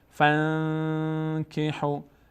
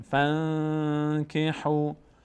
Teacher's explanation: کاف همینطور اگر بعد از نون ساکن کاف هم بیاد اخفا میشه. فانکحوا، صدا از بینی ادا میشه، روش مقداری توقف میکنیم